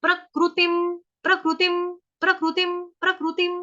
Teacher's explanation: त के साथ है छोटी की मात्रा तिम। अनुस्वार जो ऊपर बिंदी है उसका उच्चारण होगा हलंत म